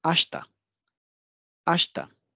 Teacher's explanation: these are the two unvoiced consonants and E is appearing in between them that's why this e will get devised e will get devised